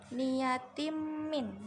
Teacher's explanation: ada kasrohtain bertemu dengan mim, itu idgham bihunah karena mim itu salah satu huruf idgham bihunah, waw, mim, nun, ya.